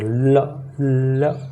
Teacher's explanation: ल जो है वो पार्श्विक व्यंजन कहलाता है। बोलने में जुबान फ्रंट को लॉक कर देती है और हवा पारश्व से निकलती है।